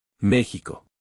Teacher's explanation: It is closer to the English H sound, but with a little bit more friction in the back of the mouth. Think of a relaxed, breathy H with just a touch of extra texture. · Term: the J sound